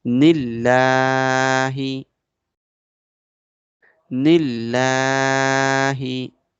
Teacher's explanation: And this Noon will be connected with the Lam of Allah. But before the word Allah, Kasra is coming. So this Lam of Allah will be light.